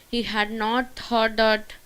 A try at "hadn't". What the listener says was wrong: whenever you get had not, you have to say hadn't. Was not, wasn't. He hadn't thought.